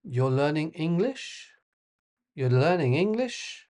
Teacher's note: It's a question. Intonation goes up. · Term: rising intonation